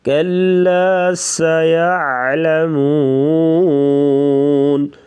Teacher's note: کلا کا جو کاف ہے اسے باریک پڑھیں گے، لام کو بھی باریک پڑھیں گے